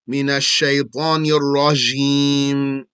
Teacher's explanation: Jim, sheen, and ya from the middle of the tongue. Middle of the tongue means if you close your lips and then stick your tongue out as far as you can.